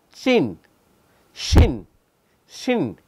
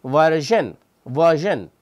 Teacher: the blade of the tongue gets in between the alveolar ridge and the hard palate. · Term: post-alveolar consonant